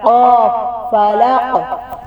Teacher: قاف کو واضح گلے سے نکالنا ہے